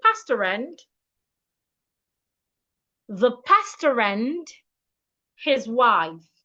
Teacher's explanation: So for me to read this sentence correctly, I need to link the R in pastor and the R in and. It means that pastor and the word and should be pronounced as one word. So instead of saying pastor and, I should say pastor and, the pastor and his wife.